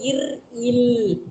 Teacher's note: இர் இல் மேல் நாக்கி நுனி வருடல்